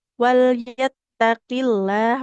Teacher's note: Nah, jadi kita bahas sedikitnya lafaz Allah ini memang lamnya dibaca tebal tapi harus diingat apabila huruf sebelumnya fathah atau domah ya. Apabila huruf sebelumnya dia kasrah seperti ini, walyattaqillah, maka enggak usah kita baca tebal huruf lamnya